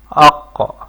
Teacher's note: زبان کی جڑ جو ہے اوپر تالو کی طرف بلند ہو رہی ہے